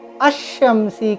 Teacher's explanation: لام کو نہیں پڑھیں گے، یعنی حروف شمسی کا قاعدہ یہ کہ لام کو ہم نہیں پڑھیں گے، ڈائریکٹ الف یا حمزہ سے شین کو ملا لیں گے